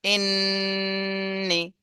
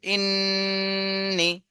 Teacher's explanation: টান দেয়া যাবে না দ্রুতই বলতে হবে কিন্তু গুন্না করে তারপর তাড়াতাড়ি বলতে হবে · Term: ওয়াজিব গুন্না